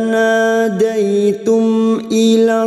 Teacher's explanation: Daitum mim sukun bertemu hamzah, mim sukun dibaca jelas tanpa mendengung, namanya bacaan idhar syafawi